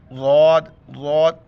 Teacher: ضاد کو ادا کرتے وقت زبان جو ہے اوپر کی رائٹ سائڈ کے داڑھ میں ٹچ ہو جاتا ہے